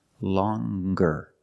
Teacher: With the nasal sound plus the hard G.